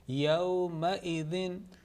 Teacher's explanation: يَوْمَئِذٍ. Remember, this Hamza should not be pronounced like Ain sound. There should be no trace of that.